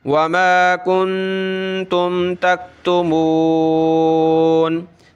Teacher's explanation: नून पे हमने नाक में आवाज़ पैदा करनी है, नून साकिन है